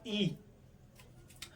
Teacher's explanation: आपकी जीभ के अगले हिस्से का प्रयोग हो रहा है, तो उसको जैसे समझो ये तुम्हारी जीभ है ऐसा खतरनाक सी, इसमें अगर इस वाले हिस्से का प्रयोग होता दिखे लग रहा हो तो इसको हम क्या कहेंगे, अग्र स्वर कहेंगे।